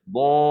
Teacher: kita kena ada letak satu suara, iaitu suara yang sedikit tinggi yang diberi nama suara itu ialah an-nabar. An-nabar.